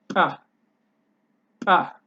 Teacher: you create it with your lips, but you hit it really hard, so you create so that you create an explosive sound. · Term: bilabial